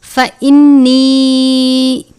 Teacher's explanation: فَإِنِّي، الف سے پہلے زبر ہے، الف مدہ، نون مشدد پر غنہ کریں گے